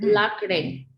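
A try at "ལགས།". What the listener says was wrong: La, not lak.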